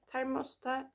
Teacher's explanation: we use the t because thermos ends in an unvoiced consonant, which is s, which needs to be followed by another unvoiced consonant